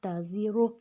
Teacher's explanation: صرف زے کی سیٹی ہے، اور را موٹا ہے